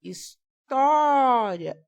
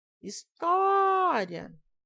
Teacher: Então, o tó vai ser a sílaba tônica.